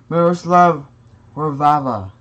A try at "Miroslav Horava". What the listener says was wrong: Horvava. It's not Horvava, there's only one V. Miroslav Horava.